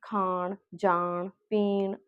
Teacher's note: ਨਾਸਕੀ ਵਿਅੰਜਨ ਦੇ ਪ੍ਰਭਾਵ ਕਾਰਨ ਉਸ ਤੋਂ ਪਹਿਲਾਂ ਆਉਣ ਵਾਲੇ ਸਵਰ ਨਾਸਕੀ ਹੋਵੇ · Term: ਨਾਸਿਕਤਾ